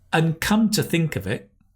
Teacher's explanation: Very nice the “and” becomes “/ən/” right? · The and becomes un, right? And come to think of it.